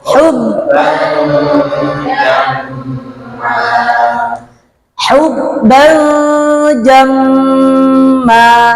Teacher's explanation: hubban harus lebih pendek daripada jamma